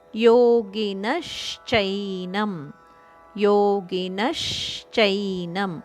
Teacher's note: ನದ ಮೇಲೆ ಆಘಾತ ಇದೆ ಆದ್ದರಿಂದ ಮುಂದಿನ ಶದ ಉಚ್ಚಾರಣೆಗೆ ಸ್ವಲ್ಪ ಒತ್ತುಕೊಟ್ಟು ಹೇಳಬೇಕು